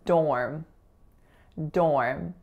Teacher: in dorm it's only one syllable and that vowel is a complex AR vowel